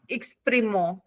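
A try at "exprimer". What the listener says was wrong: नो मो, नॉट मो, it's a मे, M E R,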